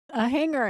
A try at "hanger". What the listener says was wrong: You got a little emphasis on the G. That's what I always notice.